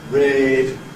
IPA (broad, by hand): rɪːd